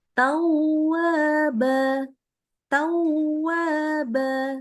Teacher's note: Ta ini enggak boleh ya Ini karena dia menahannya terlalu lama bukan idgham jadi wau ya cepat aja